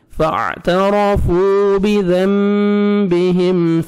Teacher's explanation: یہاں پہ میم ساکن کا اظہار ہے جلدی پڑھنا ہے